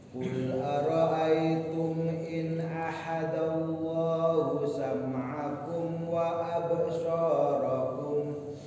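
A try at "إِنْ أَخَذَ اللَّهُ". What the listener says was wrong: Ulangi, kha bukan ha. In akhadallah.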